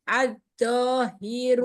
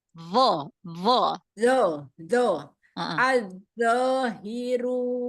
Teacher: Bukan do, jangan ditempelkan, gesek.